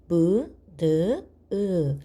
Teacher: 이렇게 미음, 니은, 이응 같은 소리는 소리를 낼 때 코를 손으로 한번 막고 그 다음에 무, 느, 으 하고 발음하면 손끝이 울려요. 공기가 코 밖으로 나오기 때문에 그렇습니다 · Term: 콧소리